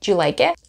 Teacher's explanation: Sometimes you might even hear native speakers kind of drop the D in the beginning.